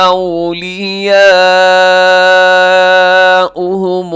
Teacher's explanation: یہاں مد متصل 4 سیکنڈ تک اسے ضرور لمبا کیجیے گا